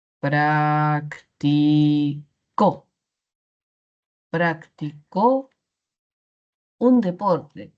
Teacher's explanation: si muevo esa sílaba tónica en las siguientes sílabas, evidencio que sí existe, que sí cumple función distintiva